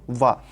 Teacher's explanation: दंतोष्ठ, जहाँ पे आपके दांत और होंठ दोनों का प्रयोग होता है। तो दंतोष्ठ से भी केवल एक ही वर्ण बोला जाता है जो होता है वा।